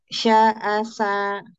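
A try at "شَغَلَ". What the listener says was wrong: jangan diseret kak syakhola syakhola tek tek tek syakhola ya janganlah kebiasaan orang Indonesia itu memang menyeret kata-kata misalkan dada kayak gitu kan diseret itu sebenarnya dada kan gitu terus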